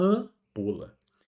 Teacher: Ele só está aqui para dizer que o A é nasal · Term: a nasal